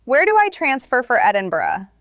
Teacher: Use a practical tone. Stress connect and transfer. Rising intonation at the end.